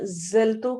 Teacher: زا سیٹی والے حروف میں سے ہے